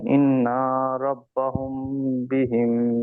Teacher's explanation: মিম সাকিনের পরে বা এসেছে, তাই মিম সাকিনের কে এক আলিফ পরিমাণ গুণনা করে পড়তে হবে।